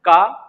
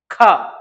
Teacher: हमारे मुख से वायु निकलती है, तो आपको अपना उल्टा हाथ मुख पे लगाना है, बोलना है का खा। खा में देखिए आपको वायु महसूस होगी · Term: महाप्राण